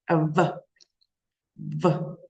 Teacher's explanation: Прикусили зубками нижню губку і сказали в